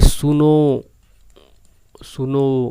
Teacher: ओ की मात्रा ज्यादा चलेगी तो प्लुत स्वर